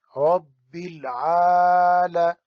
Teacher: رب کی را کو موٹا کرنا ہے اور عین کو کھینچ کے